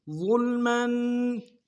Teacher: ظا کو موٹا ادا کر کے لام کے سامنے لانا ہے، غنہ نہیں ہوگا، میم کے اوپر تنوین غنہ کریں گے